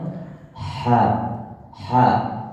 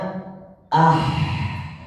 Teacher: ketika dia berharakat sukun bacanya ah lebih desis desisnya lebih menyebar lebih keluar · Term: huruf yang sukun